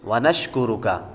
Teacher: شین کے بعد کاف باریک ہے، آگے را کو پر پیش ہے، را کو پر پڑھیں گے، آخر میں کاف بھی باریک ہے